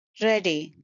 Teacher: it's a two syllable word and stress is on the first syllable